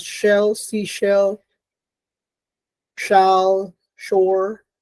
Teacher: It's palatal, it's voiceless, it's a fricative.